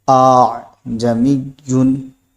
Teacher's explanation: اب اس کو پڑھیں گے کیسے؟ تو جو پہلا حمزہ ہے اسی کو ہم لمبا کر دیں گے تو دوسرا حمزہ خود بخود ادا ہو جائے گا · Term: تسہیل